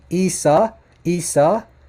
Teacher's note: Listen to that guttural ayn at the beginning.